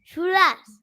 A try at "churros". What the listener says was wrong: No, we're gonna roll the R's. Churros.